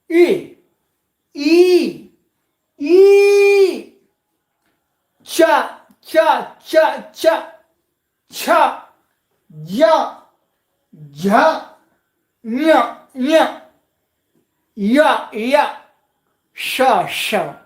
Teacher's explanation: सबके उच्चारण में जिह्वा मुड़ करके तालु में स्पर्श हो रही है।